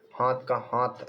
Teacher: महाप्राण ध्वनियों का अल्प प्राणीकरण